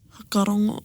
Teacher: So their WH, they drop the W, and the F sound just becomes a H sound.